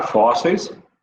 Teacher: a penúltima sílaba é a mais forte, ele é uma paroxítona